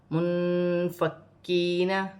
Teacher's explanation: یا ساکن سے پہلے زیر آ رہی ہے تو یا مدہ بنے گی، اسے بھی 1 الف کی مقدار کھینچ کر پڑھا جائے گا۔ نون ساکن میں اخفا ہوگا کیونکہ فا حروف اخفا میں سے ہے۔ کاف مشدد ہے، اسے باریک کاف بھی ہے اور 2 مرتبہ جماؤ کے ساتھ پڑھا جائے گا۔